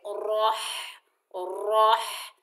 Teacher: را کے اوپر زبر، آگے ہا ساکن ہے، را کو ہا سے ملائیں گے، ہا کو حلق کے درمیان سے ادا کریں گے